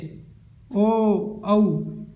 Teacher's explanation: ये हम कंठ एवं ओष्ठ से बोलते हैं